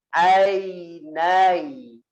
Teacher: Ain pertama tidak ditahan.